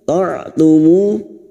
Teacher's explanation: Ta'tumu mu diikuti wawu sukun 2 harakat mad tabi'i.